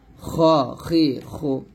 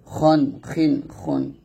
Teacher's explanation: গলার বা কণ্ঠনালীর শেষ হইতে আমরা খটা মোটা করে উচ্চারণ করব।